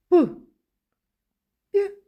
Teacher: довго протягнути їх не виходить